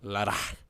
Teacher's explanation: A lot of it's very breathy. Ladakh. Where it's a KH.